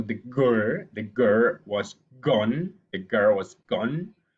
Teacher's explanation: so you block the air with the tongue but in the back part of your mouth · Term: velar sound